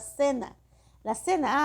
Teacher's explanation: la cena se escribe con C, pero nosotros lo pronunciamos como si fuera el fonema de S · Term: ceseo